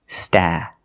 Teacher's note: for the first vowel we use the short ah like black cat